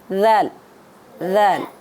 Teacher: ज़ुबान को दांतों के साथ नरमी से लगाना है, आपने सख्ती से नहीं लगाना है, सख्ती से लगाएंगे तो ज़ा हो जाएगा वो।